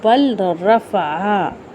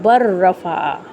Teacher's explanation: پھر اس میں جو آیت نمبر 158 ہے، جس کا جو ہے وہ ہے کہ بل رفع، اس کو ہم کیسے پڑھتے ہیں؟ بر رفع، لام کو ہم نہیں پڑھیں گے کیونکہ را کے اوپر را مشدد ہے نا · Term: ادغام